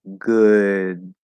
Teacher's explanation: If I say it really slowly, good. Technically, there is a held D